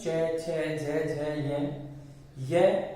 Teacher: इन वर्णों का जब उच्चारण करते हैं तो हमारी जीवा है ना, वह तालु से थोड़ा ऊपर की ओर स्पर्श करती है। तालु से थोड़ा सा ऊपर की ओर स्पर्श करती है। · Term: तालव्य